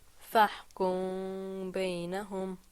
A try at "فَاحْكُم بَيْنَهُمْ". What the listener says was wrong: Draw it out a little bit more.